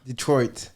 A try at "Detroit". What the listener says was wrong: Yeah, you gotta put the T on it. end.